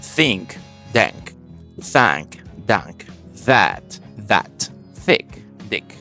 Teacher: English retains that phon as a th but Dutch and German turns it into D's